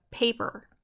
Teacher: of an IM which was the de dum the trokey is a two syllable foot that stresses the first syllable